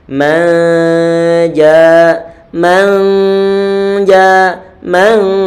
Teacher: Ditahan suara dengungan pada huruf nun yang disamarkan tersebut. Ini yang disebut sebagai bacaan ikhfa.